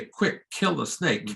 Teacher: you're aspirating those K's, but you're not changing the meaning